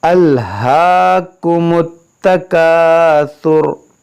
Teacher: वक्फ करेंगे तो रा पर जो पेश है वो साकिन हो जाएगा